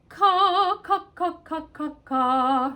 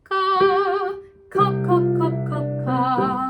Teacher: K is a velar, so it's engaging the soft palate